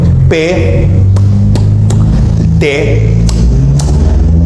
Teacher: un obstáculo total a la salida del aire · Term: oclusivos